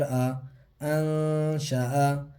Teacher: نون ساکن کے بعد جو 15 حروف اخفا ہیں اس میں سے شین آ رہا ہے، نون کی آواز کو ناک میں چھپا کر ایک الف کے برابر کھینچ کے پڑھیں گے